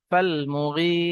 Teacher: فالمغيرات صبحا، ফালাম জাবার ফাল, মিম পেশ মু, ফাল মু, গয়েন ইয়া জের গি, ইয়া সাকিনের পূর্বে জের ইয়া মাদ্দা একালিফ টান হবে।